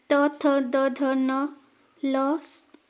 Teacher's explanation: इन सभी को बोलने के लिए हमारे दंत का प्रयोग हो रहा है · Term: दंत वर्ण